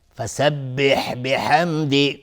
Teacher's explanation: میم ساکن بعدش دال اظهار شفوی